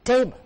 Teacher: The stress is on the first part, table. And you open the dictionary and you will notice a tiny mark above the T phoneme, table.